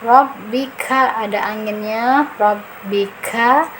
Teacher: Rabbika tekan ya karena ada tasdid baknya